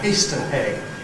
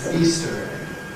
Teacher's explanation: shows Londoners as using hypercorrect [h]’s, and saying things like a ‘Heaster hegg’ instead of an ‘Easter egg’.